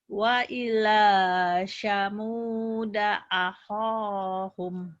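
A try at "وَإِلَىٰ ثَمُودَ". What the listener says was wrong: Sa-nya ujung lidah. Cedal ya. Wa ila samuda.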